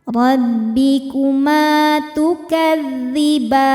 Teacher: Sebab ada alif didahului fathah, maka mimnya panjang dua harakat. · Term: mad thobi'i zohiri